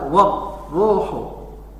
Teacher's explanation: jadi ra-nya dibaca tafkhim karena dia sebelumnya ada harokat fathah, wawunya berhuruf fathah, maka dibaca warruhu ya, dibaca tebal.